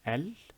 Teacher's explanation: there is an elongation, but there is also a hamza, that guttural sound you hear, and so that is an elongation hamza.